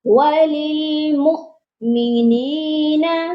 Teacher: وللمؤمنین، اس word میں غلطی ہوتی ہے وللمؤمنین، مومنین نہیں ہوگا، واو کے اوپر حمزہ ہے اور میم کو ہم نے حمزہ کے ساتھ ملانا ہے اور ادھر جھٹکا دے کر پڑھنا ہے